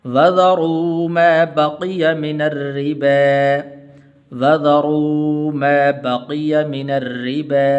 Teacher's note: را کے نیچے زیر ہے تو اس لیے باریک پڑھنا ہے۔